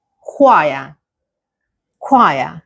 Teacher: even though there is a ch at the beginning of the word, it is not the same sound as chair. It is a k.